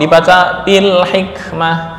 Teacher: ketika kita membaca wakaf maka mengganti ta dengan ha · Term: ibdal